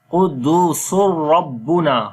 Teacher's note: Sin we connect with the ra. After the tanween, the next letter is ra. So we make idgham without ghunna. · Ra we read in heavy sound. There is fatha on the ra. Noon we long due to alif madda.